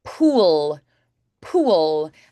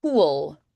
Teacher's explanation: And you can feel that L, that darker L.